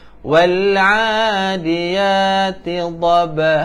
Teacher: Dan di sini dia ada qalqalah sikit. Okey, melantun, huruf ba melantun